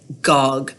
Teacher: so the D in dog is produced at the back as a G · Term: backing